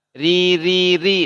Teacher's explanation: huruf ro yang tipis-tipis nih pangkal lidahnya nggak diangkat bedanya tebal sama tipis hanya di Pangkal lidahnya saja dia isti'la